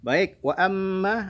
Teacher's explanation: wa amma ada gunah lagi mim bertasydidnya.